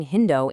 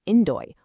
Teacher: the Greeks didn't have an H sound in their language so they just dropped it completely